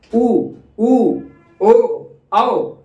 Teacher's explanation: तो लगभग ओठ की स्थिति ऐसी होती है कि वो वृत्त के समान हो जाता है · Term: वर्तुल